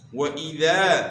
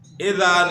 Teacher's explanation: وَإِذَا واو کی ادائیگی میں ہون گول کرنے ہیں۔ وَإِذَا حمزہ کی زیر کو جو ہے نا معروف طریقے سے ادا کرنا ہے، مجہول سے بچنا ہے